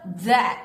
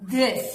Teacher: TH 유성음, 떨림 있는 소리는 우리가 D로 소리냅니다